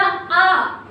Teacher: आ बोला तो आपकी जीभ का पिछला हिस्सा काम किया तो वहां पर कौन सा हो जाएगा, पश्च स्वर।